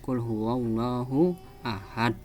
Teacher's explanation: qalqalah di akhir itu membacanya dengan memantul yang sangat keras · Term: qalqalah kubro